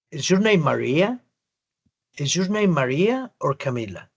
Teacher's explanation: Entonces ahí cambió el acento de mi pronunciación. Ya no terminé por allá arriba con el tono, sino que terminé abajito.